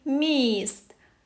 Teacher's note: звук і пом'якшує звук м тому звук м в слові міст приголосний м'який